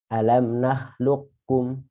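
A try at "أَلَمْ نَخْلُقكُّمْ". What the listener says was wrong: Hati-hati, jangan kebalik. Yang pertama qaf, yang kedua kaf. Nakhluqkum. Jadi anginnya itu di akhir.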